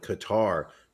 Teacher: They put the emphasis on the second syllable, though I believe the proper pronunciation has it on the first.